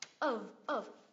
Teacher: Mình đọc là of. V âm phụ âm cuối là v, chứ không đọc là ơ, cũng không đọc là up em nhé